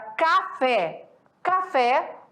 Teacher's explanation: sílaba tônica sendo aí pronunciada com mais força mais forte né o timbre ali mais intenso na última sílaba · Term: oxítona